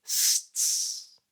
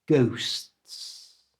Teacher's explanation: Start saying the first S and keep it going. Just stop the sound with your tongue flicking up for the T and then bring the tongue down and the S keeps going. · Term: STS at the end